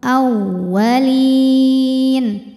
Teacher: Masuk ke wawu tasydid, maka kita baca dengan nabar. Kita taikan intonasi suara kita, tidak perlu ditahan.